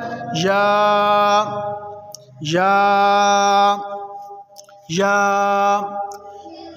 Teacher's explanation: या को ज़बान के दरमियान और तालू के दरमियान से अदा करेंगे।